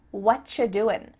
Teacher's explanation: at the end of the word doing that G also gets cut